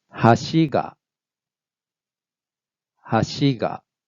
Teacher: Low, high, low pattern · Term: high low accent